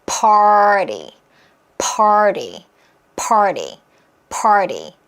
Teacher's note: 플랫 T 처리가 가능해서 리얼 사운드로 하면 편해요